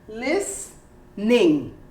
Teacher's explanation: listening or even less you don't say listening you say listening you don't hear the t and you don't hear the e